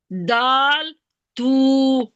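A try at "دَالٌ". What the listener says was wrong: दाल नहीं, दाल के ऊपर तो जबर है ना, दाल बोलेंगे इसको।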